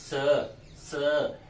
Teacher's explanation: जब हम इसको बोलेंगे तो ऊपर नीचे दोनों दांत आपस में मिल जाते हैं, और वायु दोनों दांतों के बीच से निकलती है। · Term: दंते स